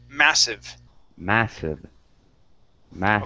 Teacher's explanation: This word here is pronounced massive, so the stress is at the beginning.